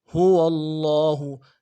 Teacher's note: لفظ اللہ کے لام کے اوپر کھڑا زبر ہے، اس کھڑا زبر کو ایک الف کی مقدار میں کھینچنا ضروری ہے